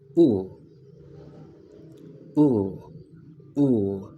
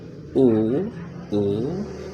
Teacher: So if we go to the right of the chart, we can find in the upper or high back the phone ooh ooh ooh. Look at the lips. They are very rounded when they say ooh ooh. And if you notice this two points in the oo and this in this representation of the phone oo this mean that the this sounds is long and if it's long is also stress.